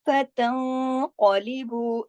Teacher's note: नून साकिन के बाद कौफ आ रहा है, फतं, यहाँ इख्फा हो रहा है मोटा, क्योंकि आगे कौफ है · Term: इख्फा हकीकी